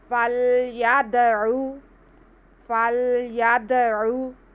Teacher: दाल साकिन, दाल हरूफ कलकला में से, तो इस पे हम साकिन हो गया तो कलकला करेंगे।